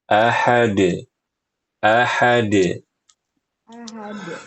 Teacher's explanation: qalqalahnya tidak ditahan karena dia tidak bertasydid